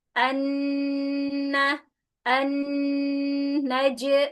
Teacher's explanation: Hati-hati nun tasdid dengungnya sempurna. Kita ambil tiga harakat ya. Berarti lama dia. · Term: nun tasydid